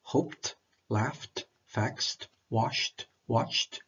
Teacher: The unvoiced consonants p, f, s, sh, ch, k. In this case, the end of it is pronounced t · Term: past simple verbs